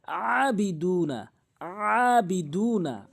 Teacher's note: এখানে আইনের উচ্চারণ করতে হবে হলকের মাঝখান থেকে